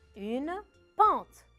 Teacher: J'entends pas à la fin, je n'entends pas le E. Je ne le prononce pas trop.